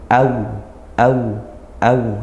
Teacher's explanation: ketika wau sukun atau Ya Sukun didahului dengan fathah maka dia dibaca Lin atau lembut